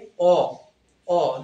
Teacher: যখন অ উচ্চারণ করবা দেখো জিহ্বাটা আমাদের পিছনে যাচ্ছে, মানে জিহ্বার অবস্থান পশ্চাৎ।